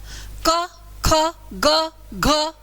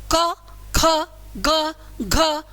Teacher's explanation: क वाली लाइन का उच्चारण स्थान क्या है कंठ है